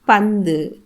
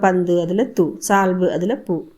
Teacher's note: பந்து இறுதியில் இருக்கக்கூடிய அந்த தூவில் இருக்கக்கூடிய உகரம் அரை மாத்திரை அளவில் குறைந்து ஒலிக்கிறது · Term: குற்றியல் உகரம்